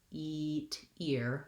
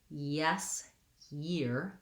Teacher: starting in the glide position my tongue i think is further up · feeling that you're just starting in that E position versus yes, year, you, starting in the y glide position. My tongue, I think, is further up, and it's dropping to the schwa and then going back up to the E, ye.